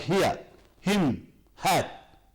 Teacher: And now, the last sound in the fricatives is the ha. This is made in the glottis here, between the vocal cords. The ha, like here, him, hat.